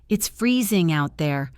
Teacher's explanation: Listen to the emphasis on freezing.